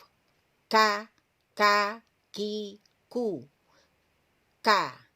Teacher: Jadi kalau qaf di sini, jadi pangkal lisan atau ujung lisan itu tersentuh pada langit-langit lunaknya. Kalau yang kaf, ujung lisan ini tersentuh pada langit-langit bagian keras. Ya, agak maju ya, bagian keras.